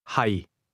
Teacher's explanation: Notice the low, level tone in the word am or to be.